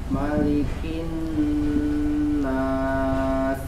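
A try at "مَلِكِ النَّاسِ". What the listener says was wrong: Malikin nas. Nas. Tidak diturunkan ya, rahangnya itu kayaknya karena rahangnya turun. Tidak. Turunnya biasa. Nas, malikin nas biasa. Sin itu seperti sin setengah ta ya. Ya, terdengarnya mesti seperti sin setengah ta. Sa biasa. Sasa. Nah, seperti itu ya, sin.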